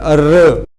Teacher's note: और लुंठित और प्रकंपी में, प्रकंपी इस तरह से इसका नाम रखा गया कि जब आप इस वर्ण का उच्चारण करेंगे तो कहीं ना कहीं आपकी जो जिह्वा होती है, आपकी जो जीभ होती है, उसमें कंपन सा उत्पन्न होता है। जैसे र, तो र जब आप बोलेंगे तो आप जीभ जो है कंपकपाती हुई दिखाई देगी। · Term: प्रकंपी वर्ण